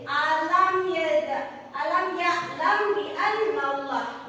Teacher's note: Yang ketiga yaitu antara mim dan ba pada bibir ditahan 2 ketukan